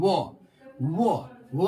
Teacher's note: वो दांत भी प्रतिक्रिया करता है और ओष्ठ भी, दंत ओष्ठ मतलब दांत और ओष्ठ।